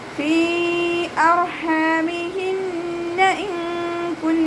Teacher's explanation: നൂൻ സാക്കിനയെ മറച്ചു വെച്ച് മണിച്ചോടി കൊടുക്കുക. നൂനിൻ്റെ സൗണ്ടിന് വ്യക്തമായിട്ട് കേൾപ്പിക്കരുത്. ഇൻ കുന്നാന്ന് ഓതരുത്.